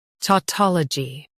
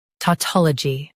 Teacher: U.S. stress ta. UK stress toll.